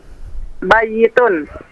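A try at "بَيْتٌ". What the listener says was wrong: Baitun. La, baitun. Tidak ada bayitun. Ya-nya disukun. Baitun.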